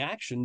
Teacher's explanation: I'm saying action, but I don't hear the quote unquote T sound. Well, that's because there isn't a T sound. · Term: sh phoneme